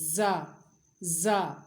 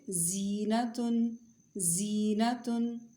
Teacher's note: زا کی آواز باریک اور سیٹی والی